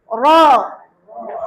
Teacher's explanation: Hujung lidah, masih lagi hujung lidah. Huruf lidah lagi. Hujung lidah dilengkungkan. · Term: makhraj ra